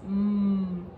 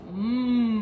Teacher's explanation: when we say M, the M sound, mmm, our mouths are closed